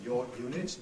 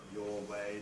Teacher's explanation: you don't get linking R before Y and W